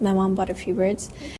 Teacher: used a flap, which is a very fast, soft, light sound.